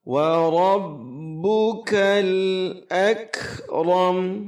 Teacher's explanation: Wa rabb itu ra tafkhim tebal. Kemudian ba tasydid dihentakkan sedikit.